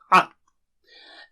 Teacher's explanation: So a comes from the middle of the throat. Try to gulp.